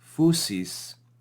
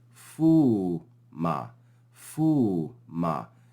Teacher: So instead of phusis, we see phuma, phuma, the movement of that upsilon from shorter to longer